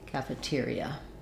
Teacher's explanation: So that would sound like calf, tier, E, with the stress on tier.